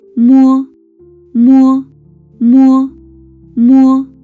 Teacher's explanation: the air goes through the nose instead of the mouth.